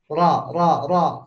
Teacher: ada yang disebut takrir atau suaranya jadi bergetar